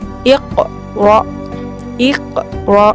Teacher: untuk huruf to dan qaf, pengucapan bacaan qalqalahnya diakhiri dengan huruf o